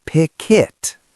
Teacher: the K in pick moves over to the I in it